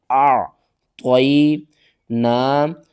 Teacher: عین کو آپ نے حلق کے درمیان والے حصے سے ادا کرنا ہے، عین کا جو مخرج ہے وہ آپ نے پورا ادا کرنا ہے۔